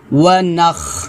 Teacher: খটা খলকের শেষ থেকে উচ্চারণ হবে